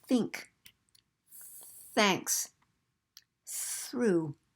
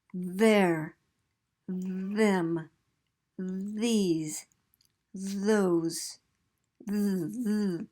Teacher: That TH sound, like think, thanks, through, that TH has no voice, so we're going to represent it with this symbol, and that's called the theta symbol.